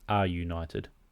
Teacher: We have a vowel sounding, an article that ends in a vowel, a, and then even though the next word starts with a vowel, it doesn't start with a vowel sound, united. So it's not an united, it's a united.